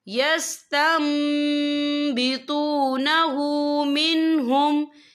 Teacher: نون ساکن کے بعد جو ہے با آ رہا ہے، تو یہاں پر انقلاب ہوگا، یعنی تبدیلی ہوگی، تو ہم یہاں میم کا تلفظ کریں گے۔ ہم تا کو جو ہے میم کے ساتھ ملا کر پڑھیں گے اور ہم یہاں غنہ بھی کریں گے۔